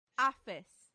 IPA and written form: ˈeɪfɪs (aphis)